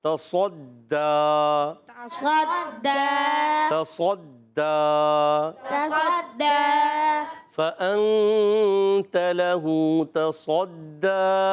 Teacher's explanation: تصدا. اب دیکھیے دال پر تشدید ہے، ذرا رک کر ادا کریں گے